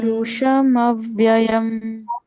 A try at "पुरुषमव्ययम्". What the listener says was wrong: पुरुष, श पे ब्रेक करना है वर्ड को, और मव्ययम को एक साथ पढ़ना है।